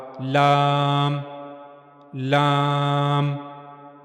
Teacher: جب زبان کا کنارہ اوپر کے اگلے دو دانتوں کے مسوڑوں سے جا کر ملے گا اندر کی طرف سے تو وہاں سے لام ادا ہوگا